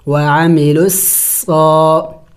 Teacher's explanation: صاد یہ سیٹی والے حروف میں سے ہے، پڑھتے وقت منہ سے سیٹی کی آواز نکلنی چاہیے